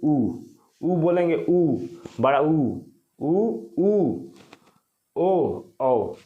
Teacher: जिसमें ओठ गोलाकार होता है उसे बोलते हैं वृत्त मुखी